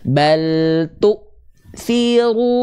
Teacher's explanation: Hamzah itu punya sifat namanya adalah syiddah syiddah artinya tertahan suara ah sifat syiddah tertahan suara pada huruf Hamzah itu akan sangat